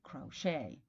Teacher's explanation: people will try to anglicize those words and say crochet but Americans will retain French stress and say crochet